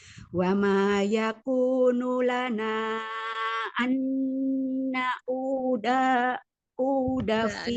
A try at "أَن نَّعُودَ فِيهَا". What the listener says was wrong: Adanya pendek.